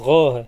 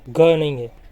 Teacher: غین یہ حلق کے اوپر والے حصے سے ادا ہوتا ہے